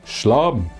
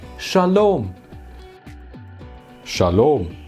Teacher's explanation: with an a vowel instead of an o vowel like in Hebrew